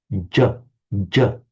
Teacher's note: the ja sound, you don't start with the tongue behind the teeth, you start with the tongue a little bit further back. It's called a palatal, j, j, a little bit further.